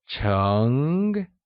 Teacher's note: Chung is pronounced using a mid rising tone